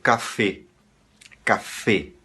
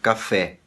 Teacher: ele vai dizer café, café, com o E fechado.